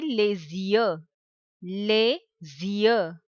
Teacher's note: we will join the sound of letter S with the letter Y and it will be les yeux.